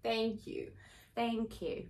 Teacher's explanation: we say it with a little bit of a diphthong there. So there's not a single vowel, ah, but we add a little e afterwards, which in turn makes the first sound less open. So it sounds like thank you.